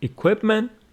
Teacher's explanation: equipment with the stress on the second syllable